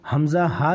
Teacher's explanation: حمزہ ہا سینے کی طرف سے ادا ہوتا ہے